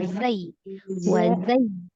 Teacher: Ujung lidah antara ujung gigi seri atas dan bawah lebih mendekati yang ke bawah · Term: huruf zainya